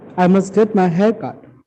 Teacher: When you pronounce the word cut, your voice should fall down.